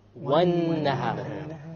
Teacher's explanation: We dropped the lam because it is a solar letter.